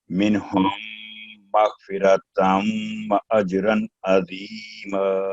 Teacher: میم پر 2 second گنا ہوگا